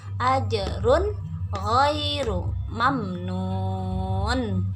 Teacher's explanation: maka huruf-huruf khalqinya ini dibaca jelas ya. Cara membaca tidak ada dengung